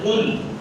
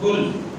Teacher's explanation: اگر قاف کو ہم موٹا نہیں کریں گے, کل کہیں گے چھوٹے کاف ساتھ